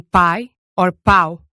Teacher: Finally, we went through Portuguese diphthongs, which were basically one of 3 things. One of the normal vowels followed by a short E or U. As in pai or pau.